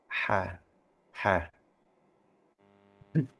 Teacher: huruf ha itu kalau kita bandingkan dengan huruf K yang tenggorokan dangkal, tenggorokan luar, huruf ha itu sebenarnya lebih bersih · Daerah pengucapan tenggorokan tengah